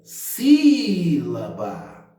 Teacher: A sílaba tônica é o si. E depois do si, eu tenho mais 2 sílabas que não serão tônicas, elas serão átonas. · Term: proparoxítona